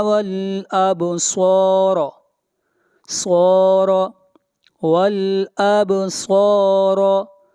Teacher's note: صاد کو موٹا پڑھیں گے، صاد حروف مستعلیہ میں سے ہے